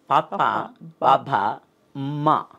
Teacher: పెదవుల కలయికతో కలుపుతాం కాబట్టి దాన్ని ఓష్ట్యాలు అన్నారండి